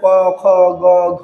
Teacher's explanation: কবর্গীয় বর্ণের উচ্চারণ কণ্ঠ থেকে